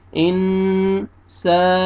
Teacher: گا۔ نون ساکن کے بعد حروف اخفاء میں سے سین ہے، اخفاء کریں گے، نوز میں ساؤنڈ لے کے جائیں گے